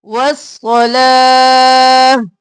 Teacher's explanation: پھر صاد موٹا، اور لا کو ایک الف کے برابر کھینچیں گے، اور واو خالی ہے، اس کو نہیں پڑھیں گے۔